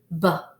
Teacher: this is a stop sound. You cannot hold it out or stretch the sound.